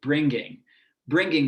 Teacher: pronounce these ngs with a ga sound so she says apparently i had a hard g bringing bringing